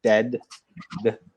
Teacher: make sure you release the D at the end